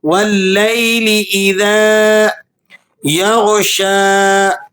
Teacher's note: गन को आपने मोटा करके पढ़ना है। ये हरूफ मुस्तालिया में से है।